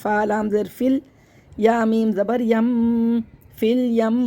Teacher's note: حمزۃ الوصل کو نہیں پڑھیں گے، فا کو لام سے ملا دیں گے